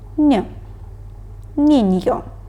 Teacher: меса ене вимовляється як український звук н Негро наступна літера еньє вимовляється як український звук н але м'яко